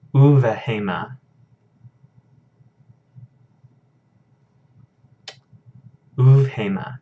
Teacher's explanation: But because of the vav here, that dagesh lene disappears. And so this is a V sound instead of a B sound.